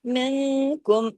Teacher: نون کے بعد کاف ہے نا اس لیے اخفا حقیقی ہو رہا ہے